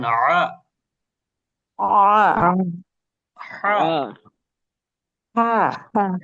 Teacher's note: কণ্ঠনালীর মধ্যভাগ থেকে বলেন আ হা